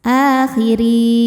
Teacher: Huruf ra dibaca secara tarqiq karena diharokati kasrah, maka ra-nya tipis. · Mad tabi'inya ya sukun sebelumnya kasrah, huruf yang disukunkannya nun. Maka ra-nya panjang, boleh 2, boleh 4 atau 6 harokat, asal konsisten dalam sekali baca. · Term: mad arid li sukun